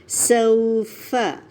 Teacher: کلا سوف، سو کے لیے ہونٹ پورے گول ہو جائیں گے، پلس سین کی وسلنگ کو نمایاں کریں. سوف، فا کا مخرج لیں، دانتوں کو نیچے والے ہونٹ پہ لگائیں